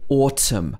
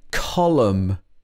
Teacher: n is often silent when it comes after m